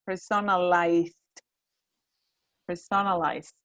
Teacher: remember we say the d and not the e at the end